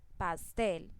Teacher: Pastel, entonces tampoco tiene tilde pero tiene el acento en la sílaba tel, porque es la que pronuncio con más fuerza o es la sílaba más fuerte de esta palabra, pastel. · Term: acento prosódico